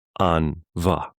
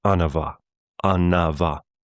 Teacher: Anava. So there's this extra syllable popping up out of nowhere.